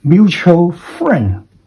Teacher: Going up in the first syllable, going down for the second syllable